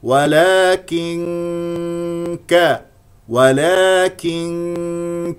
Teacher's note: مكسوره ولك كن نون ساكنه جاء بعد النون كاف اذا هنا لدينا اخفاء لان الكاف من حروف الاخفاء والغنه تكون مرققه لان الكاف مستفل